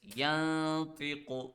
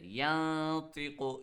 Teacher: read the sound of noon in your nose. Secondly, stretch the sound for 1 second. And third, make sure that your tongue does not touch it, and make sure that your tongue does not touch anywhere while applying ikhfa, like this, yantiqu.